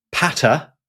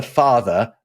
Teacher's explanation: the P of the Latin has become a F in English and the T of the Latin has become a th in the English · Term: Grim's laws shift